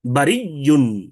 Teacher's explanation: আর ইদগাম হচ্ছে তখন ওই যে হামজা আছে, এই হামজাকে ইয়া দ্বারা পরিবর্তন করে ইয়া ইয়ার মধ্যে ইদগাম করে দেওয়া